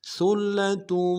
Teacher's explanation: سا کو باریک ادا کرنا ہے، لام کے اوپر لام سے ملائیں گے، لام کے اوپر تشدید زور دیں گے ، اور اگلا جو تا ہے اس کے اوپر تنوین ہے،